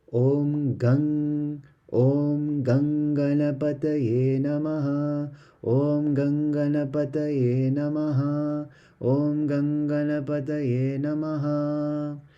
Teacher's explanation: When there is a word that ends in an anuswar that has a M with a dot on top, and if the next word starts with the letter G, then the M changes to an ng sound